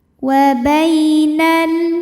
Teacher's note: Bai ada harfu lin atau huruf lin karena ada ya sukun yang sebelumnya baris fathah. Maka bacanya lembut atau lunak.